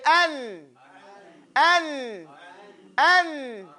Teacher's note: The tip of your tongue clearly touches the gums. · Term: noon